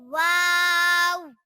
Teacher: वाव दोनों होठों की गुलाई से अदा होता है वाव और इसके शुरू और आखिर में होठ गोल करेंगे वाव